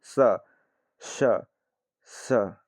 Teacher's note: हवा बाहर निकल रही है, इसीलिए क्या है? ये महाप्राण है